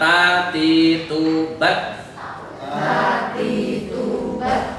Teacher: T itu teorinya ujung lidah, kemudian dengan langit-langit atas bagian depan.